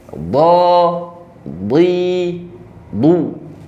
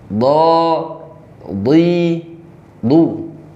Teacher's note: huruf dod hurufnya tebal ya, ketika kasroh dan dhammah dibaca tebal ya, jangan sampai serupa seperti huruf dal.